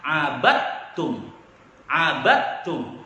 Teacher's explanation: dalam pembacaan dalnya hilang digantikan dengan ta yang bertasydid. Karena dal dan ta sama dalam makhrajnya tapi beda dalam suaranya.